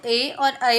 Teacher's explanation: कंठ और तालु को मिलाते हैं तो ए और ऐ बोलते हैं